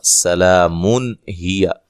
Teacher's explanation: اگر آپ ملا کے پڑھتے ہیں تو پھر یہاں نون تنوین کا اظہار ہوگا.